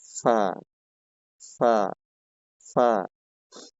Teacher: এবার 13 নং মাখরাজ, জিহ্বার আগা সামনের উপরের দুই দাঁতের সরি নিচের ঠোঁটের পেট সামনের উপরের দুই দাঁতের আগার সঙ্গে লাগিয়ে ফা উচ্চারিত হয়